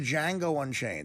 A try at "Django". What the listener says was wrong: The D is silent.